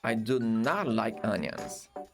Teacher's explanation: Perceba que a letra T, eu não mencionei ela, tá? Isso é o famoso stop T